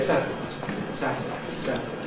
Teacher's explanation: You will find there is an alternative pronunciation with a syllabic [l̩]. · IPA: [ˈsætl̩aɪt]